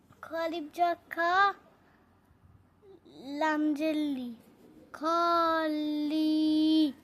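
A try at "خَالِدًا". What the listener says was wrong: লি টান দিছ গে, লি এর পরে তো ইয়া নাই, ইয়া আছে? যজমালা ইয়া আছে না, জেরের পরে যজমালা ইয়া না থাকলে টান হয় না। খ আলিফ জবর কি টান হইব না? হয় না।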